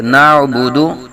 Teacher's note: ٹھیک ہے جی یہاں بھی تھوڑا سا خیال کرنا ہے ایاک نعبدو نہیں پڑھیں گے بلکہ ایاک نعبدو عین کی آواز نکالیں گے نعبدو بھی باز پڑ جاتے ہیں دال کو بھی لمبا نہیں کریں گے نعبدو دال پہ آواز رک جائے